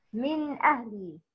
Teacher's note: the nun sakin or the tanween is pronounced clearly from its respective origination without gunna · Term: izhar halqi